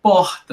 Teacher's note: Então, é um R aspirado, né, amor.